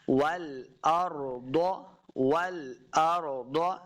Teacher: خلق السماوات والارض، واو کے اوپر اپنے ہونٹ گول کرنے ہیں، والارض، را پر پڑھیں گے، را ساکن ہے، والارض، ضاد حروف مستعلیہ سے، اس کو بھی موٹا پڑھنا ہے، پر پڑھنا ہے، والارض والارض، لمبا بالکل نہیں کرنا۔